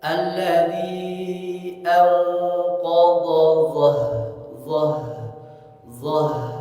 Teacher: H besar nih kata orang-orang dia pun mengalir nafas maka alirkan dulu nafasnya